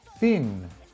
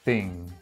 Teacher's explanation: you're using the back of your tongue on the soft palate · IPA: /ŋ/